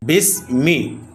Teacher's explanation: বিসমি কোন টান হবে না। হরকত তাড়াতাড়ি উচ্চারণ হবে।